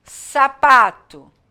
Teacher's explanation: A sílaba tônica de sapato é o pá.